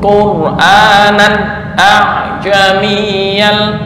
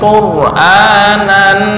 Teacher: Nah, jangan dengung. Nan jangan dengung, tapi idhar halqi. Kenapa? Karena ada tanwin bertemu dengan hamzah.